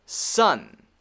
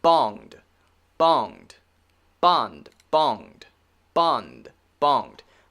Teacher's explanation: the n is making the air go through my nose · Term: n sound